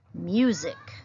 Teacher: I also want you to notice that sometimes the letter S can make a Z sound. The letter S has two sounds, S, Z, and there it is making its Z sound in the word music.